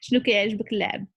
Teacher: So if you notice when I speak fast, this T sound is not like the British T is kind of like the American one.